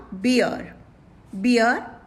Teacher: Here R is silent.